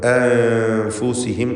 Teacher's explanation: ഈ പദത്തിൽ സാക്കിനത്ത് അനൂനിനെ ഇഖ്ഫ ഹഖീഖി നൽകി മറച്ച് മണിക്കണം. മണിക്കലിൽ തർക്കീഖാണ് വേണ്ടത്. നേർപ്പിച്ചുകൊണ്ട് അൻഫുസിഹിം എന്ന് പറയുക.